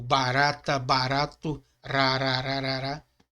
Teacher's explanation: O resh como R, tá? Mas não como R em carreta, o carreata, ele é um R bem brando, como barata, barato, rarararará, tá?